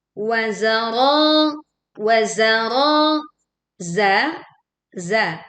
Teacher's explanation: Terdapat juga suara seruan yang tajam ketika zai ini dibaca. Ro ro dibaca dengan tebal , ya, panjangnya dua harakat.